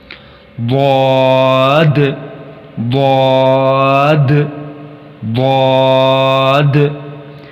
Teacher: اس حرف کی آواز انتہائی بھاری اور موٹی ہے